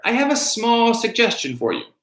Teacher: You're going to stress the qualifier small